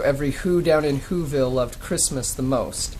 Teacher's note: unstressed stress or stressed unstressed um you know dr seuss uh uses anapests meter so it's unstressed unstressed stressed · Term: anapest meter